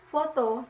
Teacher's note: bunyi gigi dan bibir yaitu bibir bawah dan gigi atas